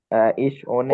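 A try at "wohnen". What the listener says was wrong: ওনে না, ভোনে। ওনে না, ভোনে। উচ্চারণ হবে, কারণ এটাকে আমরা ভে বলি, ডাব্লু কে আমরা ডয়চে বলি ভে, তো হচ্ছে ভোনে, ইস ভোনে মানে একটু বাজবে মুখের ভিতরে কথাটা, ঠিক আছে।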